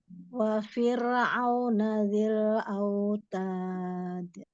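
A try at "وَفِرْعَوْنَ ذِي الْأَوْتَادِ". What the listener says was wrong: Sempurnakan wa. Wa sempurnakan itu kalau mahras huruf wa kayak gimana untuk penyebutan pelafalan huruf wa? Iya, disempurnakan, diminyankan dulu baru wa.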